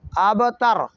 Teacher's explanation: با کو ہم نے ہلکی سی حرکت دینی ہے، اسے کہتے ہیں حرکت کا آدھا حصہ، عربی میں اسے قلقلہ کہا گیا ہے، اور اردو میں ہم اس لفظ کو کہیں گے جنبش دینا، ہلانا۔